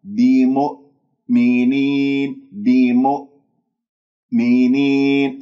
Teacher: من غير كز يعني بسلاسة بمؤمنين الميم مضمومة همزة بعدها ساكنة، لا تسحب ضمة الميم إلى الهمزة الساكنة ، تقول بيم نطقت الهمزة ولا زالت الشفاء مضمومة، رجع الشفاء · تقلقلها بمؤمنين، ولا تنطق همزتين بمؤمنين لأنه لم تقفل الأوتار الصوتية، الهمزة بقفل الأوتار الصوتية تماما حتى تخرج صافية